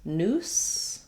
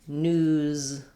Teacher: So the only difference between noose and news, even though they're spelled quite differently, is the end sound. Noose has the s sound and news has the z sound.